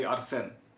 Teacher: the more French style of pronunciation when you put the stress on the second syllable. So you say Arsène.